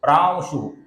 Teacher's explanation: अनुस्वार के आगे श है तो इसका हम हल्का सा व उच्चारण करते हैं